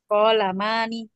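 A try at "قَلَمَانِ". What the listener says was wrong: Bukan ko. Enggak. Ko-nya enggak mau panjang.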